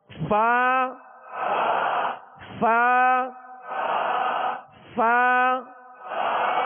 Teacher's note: اوپر کے دانتوں کے کنارے اور نچلے ہونٹ کے تر حصے سے فا ادا ہوتا ہے. فا فا فا اس کا اہتمام کیجئے، کہیں ایسا نہ ہو کہ فا کی جگہ آپ فا پڑھ رہے ہوں، ہونٹوں کو گول کر کے فا پڑھ رہے ہوں.